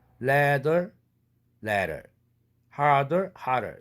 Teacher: 또 무성음 트가 아니더라도 유성음 드도 똑같은 트와 아퍼짓 컨소넌트 관계인 드도 마찬가지인데 ladder, harder 이렇게 발음하죠. 설탄음 시키는데 드 사운드는 비록 영어에서 유성음이라 할지라도 2도밖에 안 되는 아주 낮은 유성음이죠. 고로 발음할 때 harder, ladder 이런 식으로 울림도를 설탄음까지 5도까지 올리는 것입니다.